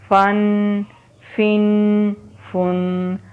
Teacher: ये गुन्ना की आवाज़ है, यानी नाक में आवाज़ जा रही है। सब हरूफ के लास्ट में अब गौर कीजिएगा, सब की आवाज़ नाक में जा रही है।